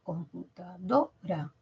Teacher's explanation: ¿Tiene acento fonético? Sí, en do.